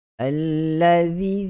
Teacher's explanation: kena keluarkan lidah sedikit. Hujung lidah kena sentuh pada 2 gigi kacip bahagian atas. Allazina yawun, sama juga macam makhraj huruf zal.